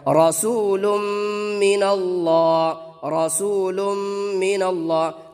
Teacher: غنہ کر کے پڑھیں گے. تو یہاں پر غنہ کر کے ہوگا چونکہ یہ ادغام مع الغنہ کا قاعدہ ہے